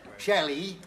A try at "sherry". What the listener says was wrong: No, sherry. No, sherry. You're saying Shelley.